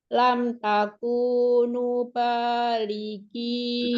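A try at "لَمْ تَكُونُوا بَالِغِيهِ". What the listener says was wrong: Kependekan sekarang Lam takunu ba. Ini 3 huruf yang semua panjangnya sama.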